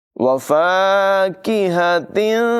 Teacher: हा की आवाज़ हलक़ के निचले हिस्से से अदा होगी, काफ की आवाज़ बरीक होगी